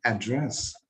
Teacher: So add is stressed syllable here, but dress is not unstressed syllable here.